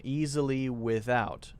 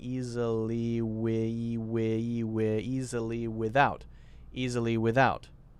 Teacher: And what I'm not doing is stopping my voice. I'm continuing the voice through.